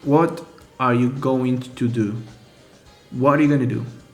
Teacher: going to often turns into gonna in speech. Also, it's worth noting that native speakers and learners alike tend to omit the auxiliary verb are.